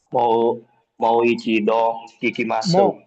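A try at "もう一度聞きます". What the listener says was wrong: Mo-nya panjang. U-nya tidak dibaca. Iya, 2 harakat mo-nya. Jangan ikimas. Ikimas nanti lain lagi artinya.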